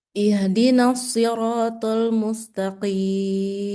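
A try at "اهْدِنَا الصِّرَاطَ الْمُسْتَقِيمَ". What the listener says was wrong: To-nya aja, nih kurang tebal ya. Jadi kayak ta dia diokan. Jangan. Siraton, ton, ton. Siraton mustaqim. Coba.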